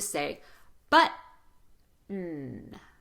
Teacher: stop the T, shorten the vowel, sustain the N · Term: glottal stop